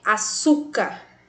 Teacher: Açúcar tem a penúltima sílaba tônica e também termina com R. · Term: paroxítona